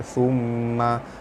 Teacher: Summa, mim sabdu, hukumnya wajibul gunah, cara baca dia ditekan dan ditahan serta dengung 2 harakat